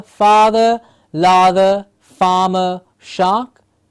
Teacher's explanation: an open mouth clear ah sound